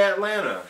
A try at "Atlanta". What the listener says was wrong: You're emphasizing just like separate words, kind of like how like students say, cool whip. Atlanta. Cool whip. Atlanta. One word. You're doing the cool whip. Atlanta. Atlanta. Atlanta.